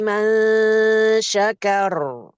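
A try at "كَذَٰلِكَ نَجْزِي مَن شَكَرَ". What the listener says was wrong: Lebih dekat lagi ke huruf syin makhraj syin.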